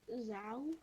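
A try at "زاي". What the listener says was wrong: It's not zal. It's zay.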